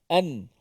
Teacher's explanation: Kalau mati an, itu kita jelaskan matinya, kena makhrajnya di hujung lidah tu kena pada lelangi atas makhraj nun, an. Tetapi di sini kita kena matikan nun tu, bunyikan nun dengan cara menyembunyikan nun yang mati tu.